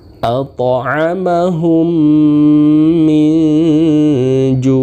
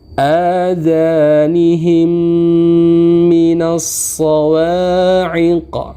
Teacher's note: pertama idgham mimi huruf idgham mimi hanya ada satu yaitu mim apabila mim sukun bertemu dengan huruf mim maka dibaca berdengung selama dua sampai t harakat contohnya atamahum minur atau contoh lain